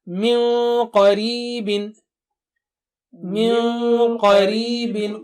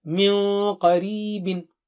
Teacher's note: Qaf is thick and high, Noon Sakina also will be thick and high.